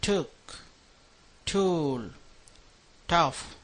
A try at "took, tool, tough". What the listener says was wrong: Exactly. And the middle sound, the oo, you're making it long enough,